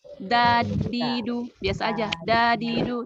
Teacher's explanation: Huruf dal, ujung lidah bertemu dengan gusi atas. Gusi bukan gigi ya.